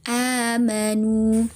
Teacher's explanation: Jadi hamzah yang kedua itu diganti menjadi alif begitu. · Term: mad badal